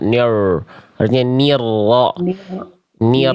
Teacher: memang getarannya tidak boleh berlebihan, tapi bukan berarti getarannya hilang, tetap getarannya jelas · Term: getaran huruf r